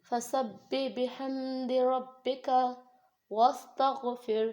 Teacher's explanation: بحمدی یہاں پر ہا کی آواز صحیح طریقے سے نکالنی ہے, اور اسی طریقے سے ربکا یہاں پر ہم نے پتلا کاف پڑھنا ہے, را کو موٹا پڑھنا ہے